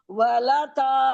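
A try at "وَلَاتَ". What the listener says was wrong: वला था नहीं, लाम को खींचना है।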